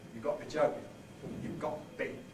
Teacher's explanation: And this is a rule that seems quite general, an optional rule in London, that you can elide a schwa, delete a schwa, after a glottal stop before a consonant. So that rather than you've got to be joking, you can get you've got to be joking, you've got to be.